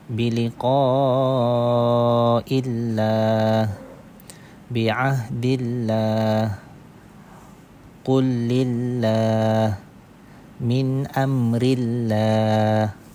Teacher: Tarqik yakni nipis. Pengertian dinipiskan bunyi huruf lam pada lafzul jalalah yang didahului oleh huruf yang berbaris di bawah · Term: tarkik